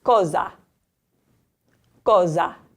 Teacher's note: It's in between two vowels, so we know it's going to sound like a Z. · if it's between two vowels in the middle of a word, it's going to have a Z sound, like in the English word zoo, okay?